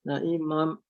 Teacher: tanwin jumpa waw. Baca dua harakat dengan dengung. Idgham ma'al gunnah.